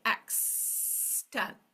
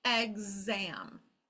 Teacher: the reason it has that g sound is because the vowel is next to it.